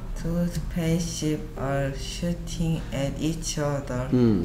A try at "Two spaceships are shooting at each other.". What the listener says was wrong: 쉽스라고 좀더 명확하게 발음해 주는 게 좋겠어요. Two spaceships are shooting at each other.